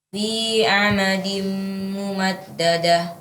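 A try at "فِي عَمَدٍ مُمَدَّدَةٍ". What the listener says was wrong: Fi amadim. Ya, tanwin bertemu mim diunahkan lagi.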